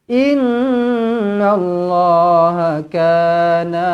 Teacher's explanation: Nun sabdu wajibul gunah dengungkan dua harakat